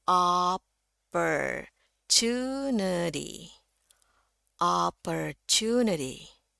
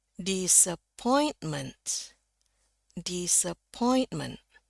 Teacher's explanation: pada kata opportunity itu yang naik di two-nya tunity sementara ini disappointment yang naik itu di pointnya